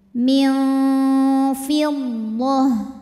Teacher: Nun disamarkan menuju makhraj huruf Fa disertai dengung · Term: ikhfa Hakiki